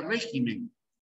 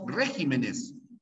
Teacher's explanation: Por esa razón para no atentar contra las normas del Castellano esta palabra de régimen cuando llega a pluralizarse se cambia el acento y sigue siendo esdrújula